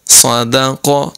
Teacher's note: دال باریک ہے اس کی اواز پر نہ ہو صاد اور قاف کی اواز پر ہوگی